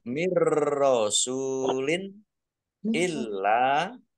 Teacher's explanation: masuk nunnya tidak dibaca langsung masuk ke huruf ro tetapi tidak mendengung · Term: Idam bila gunah